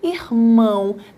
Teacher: o o tem som de u por exemplo na palavra irmão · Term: semivogal